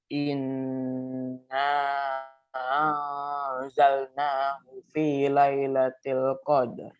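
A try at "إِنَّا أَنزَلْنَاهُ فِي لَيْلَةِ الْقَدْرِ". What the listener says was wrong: Kurang kayaknya ya, ngayunnya kurang ya.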